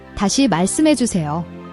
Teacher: Watch your pronunciation, the malseum part. The is a tense, sharp SS sound, almost like a hiss, not a soft S. Practice tensing your tongue for this sound.